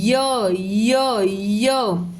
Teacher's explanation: य बोलते हुए श जीभ कहीं पर टच नहीं होती है। सिर्फ तालू से ही आवाज आती है